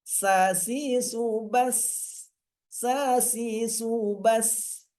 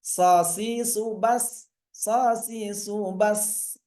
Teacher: Karena ada efek dari terangkatnya lidah. So beda dengan sa ya. Sa ringan, kalau so lebih berat.